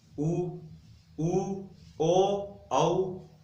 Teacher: यानी मुंह वर्ताकार की तरफ, होठ है जो वर्ताकार बन रहे हैं हमारे। तो जिसमें उ है वो वर्ताकार है और जिसमें उ नहीं है वो अवर्ताकार है। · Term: वृत्ताकार